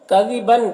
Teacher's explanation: کذباً، با کی تنوین میں، تنوین کے بعد حمزہ ہے، حروف حلقے میں سے، تو تنوین میں اظہار حقیقی ہوگا، اسے جلد پڑھنا ہے۔